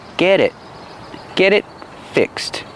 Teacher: And the t in it is a stop t because this is before a consonant. So we hear get it.